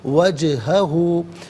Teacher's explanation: جیم ساکن ہے لیکن حرف قلقلہ ہے تو یہاں آواز لوٹتی بھی محسوس ہونی چاہیے